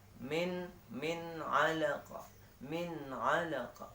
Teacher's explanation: Bertemu dengan ain. Jadi tidak boleh didengungkan. Bacanya harus jelas dan terang.